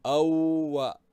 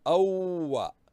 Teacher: we have joined 2 waws. One waw is sukoon, we have read as aw, and the other waw we read with fatha, awwa. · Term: shadda